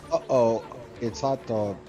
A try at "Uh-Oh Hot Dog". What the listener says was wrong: No, it's Uh-Oh Hot Dog, not even it's.